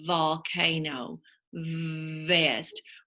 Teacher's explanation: Your tongue is kind of loose in the back of your mouth. And it's a voiced sound. Your voice box is turned on. That is the sound of the letter V.